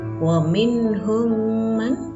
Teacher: mim sukun bertemu dengan mim, hukum bacaannya adalah idgham mimi. Cara membacanya ditahan 2 harokat.